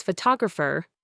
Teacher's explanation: In photographer, the second syllable, to, becomes the schwa.